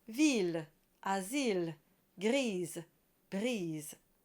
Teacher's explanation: So the E is barely there. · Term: schwa